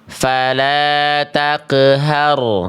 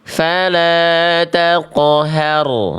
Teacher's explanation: Bunyi qof-nya tebal, Bunda, Abang, Kakak ya.